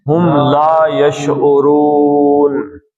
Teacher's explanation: نون عارضی طور پہ سکون میں آیا، تو یہ لمبا کر کے آپ اس کو 5 حرکتیں پڑھیں